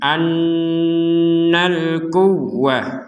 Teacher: Nun bertasydid, maka kita membacanya dengan dengungan.